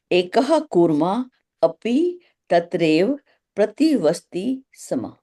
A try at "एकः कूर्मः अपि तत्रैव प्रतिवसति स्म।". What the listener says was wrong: हाँ ठीक है, बहुत सही। आज आपने थोड़ा सही उच्चारण किया है।